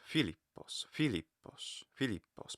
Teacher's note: the point is that the phi is the loudest